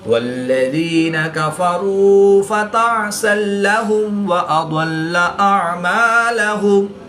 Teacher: 2 زبر کی تنوین کے بعد لام حروف یرملون میں سے ہے تو یہاں پر ادغام بلا غنہ ہوگا، یعنی کہ بغیر غنہ کے ادغام کر کے پڑھیں گے